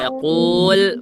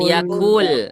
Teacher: ini huruf qaf harus tebal. Suaranya harus tebal ya. Yaqul bukan yakul ya.